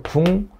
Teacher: 그러면 기역을 이응으로 바꿔서 발음하는 거예요. 그래서 국물. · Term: 비음화